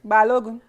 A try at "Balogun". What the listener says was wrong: It sounds like you're singing at the end when you say the gun.